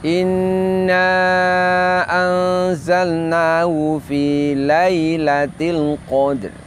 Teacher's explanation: Ya sukun setelah fathah bunyinya sama dengan kasroh dan dibunyikan dengan lin, dengan lembut.